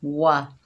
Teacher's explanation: देखिए वाव के ऊपर ज़बर है, बगैर खींचे पढ़ेंगे वा। वाव जो है इसको होंठों की नातमाम गुलाई से अदा करेंगे